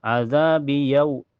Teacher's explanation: Azabi yau setelahnya ada harf ulin karena waw sukun sebelumnya harokat fathah di ya dibaca lunak ya lembut.